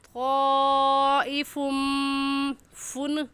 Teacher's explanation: طائف کی تنوین پر غنہ کریں گے، کیونکہ تنوین کے بعد حروف یرملون جو کہ 6 ہیں، یا غا میم لام واو نون یرملون، ان میں سے میم آ گیا ہے، تو اس وجہ سے یہاں پر ادغام کے ساتھ غنہ کریں گے۔